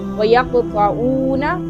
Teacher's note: یہاں پر قاف حروف قلقلہ میں سے ہے اور ساکن بھی ہے، اس کو تھوڑا ہلا کر پڑھیں گے